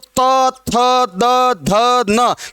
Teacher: जीभ आपकी किसको स्पर्श कर रही है? दांतों को। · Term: दंत्य